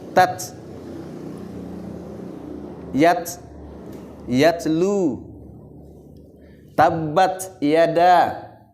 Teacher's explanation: ta juga adalah termasuk huruf hams, mengalir